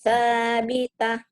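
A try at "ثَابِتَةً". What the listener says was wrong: Ada H-nya ya, Bu. Sabita.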